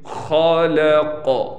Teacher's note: خا کو موٹا بھی پڑھنا ہے اور خا کی آواز بھی یعنی خرخراہٹ جسے کہا جاتا ہے، خا کی آواز بھی نکالنی ہے اور خا کو موٹا بھی پڑھنا ہے۔